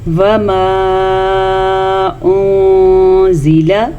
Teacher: مد کو کھینچ کے پڑھیں گے. اس مد کی مقدار تقریباً 2.5 حرکات عربیہ ہے، یعنی کہ 2.5 سیکنڈ تک اس مد کو ہم کھینچ کے پڑھیں گے.